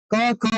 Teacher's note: क, ख , ग का उच्चारण कंठ से होता है